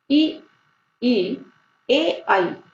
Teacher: जीव के आगे के भाग से ई, ई, ए, आई, ये 4 वर्ण बोले जाते हैं, जिसे हम कहते हैं अग्र स्वर